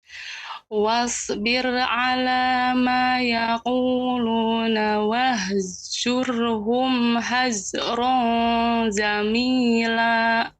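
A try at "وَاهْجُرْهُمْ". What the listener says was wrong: Ya, masih tercampur Ibu dengan wahzur. Zur, tidak zur, akan tapi jur, jim. Untuk jimnya lebih jelas.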